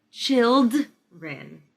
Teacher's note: I didn't hear the D in the middle